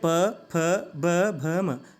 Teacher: तो आप महसूस करेंगे कि इन वर्णों का उच्चारण आप अपने होठों के द्वारा इनका उच्चारण हो रहा है, तो इसको हम ओष्ठ्य बोलते हैं।